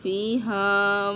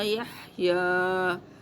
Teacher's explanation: فیہا میں ہاں کی ساؤنڈ ہم نے تھوڑی کرخت نکالی ہے، اور یحییٰ میں ہا کی ساؤنڈ بہت سافٹ سی نکالی